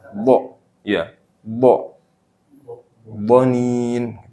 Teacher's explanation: jadi ujung lidah ini nyentuh seutuhnya ke gigi atas